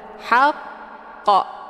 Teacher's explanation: Cara bacanya, huruf qafnya dipantulkan dengan pantulan kuat. Haqqa. keluar bunyi qa di akhir bacaan. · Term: qalqalah kubra